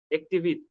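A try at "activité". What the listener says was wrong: এখানে লিয়া আছে দেজাক্টিভিতে, আকটিভিতে, লাস্টে যে ওর উপরে একশো থাকে ওটা উচ্চারিত হবে, ওটা তো সাইলেন্ট থাকে না। আকটিভিতে, অ্যাক্টিভিটি, ইংরেজিতে বললে তো অ্যাক্টিভিটি, তাই না?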